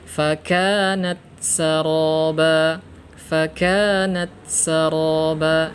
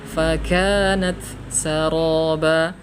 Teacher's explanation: Yang betul adalah fakanat saraba. Ya, diselesaikan dulu hams pada huruf ta, baru kita masuk ke huruf sin. Fakanat saraba.